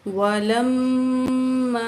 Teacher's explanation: वाव ज़बर वा, लिम लाम ज़बर मिम लम। लाम को मीम तशदीद के साथ मिला के पढ़ेंगे और मीम तशदीद में गुन्ना होगा। लाम ज़बर मिम लम, मीम अलिफ ज़बर मा, वलम मा, अलिफ से पहले ज़बर है, 2 अलिफ के बराबर खींच के पढ़ेंगे।